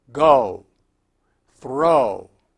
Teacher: Note that this sound is very different from the English vowel sound commonly represented by the letter O which ends with the lips rounded and protruded forward